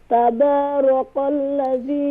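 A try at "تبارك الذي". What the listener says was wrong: Kaf is light. Recite slowly. Tabarakalladhi. Kaf is light.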